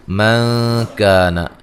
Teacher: نون ساکن کا یہاں باریک اخفا ہے، کا الف مدہ ہے